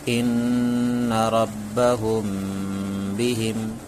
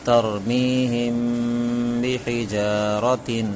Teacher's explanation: اخفاء شفوی کو 1 الف کے برابر گنہ کے ساتھ پڑھیں گے۔ یہ جتنا گنہ ہوتا ہے وہ 1 الف کے برابر ہی گنہ ہوتا ہے، اس سے زیادہ نہیں، اس سے کم بھی نہیں۔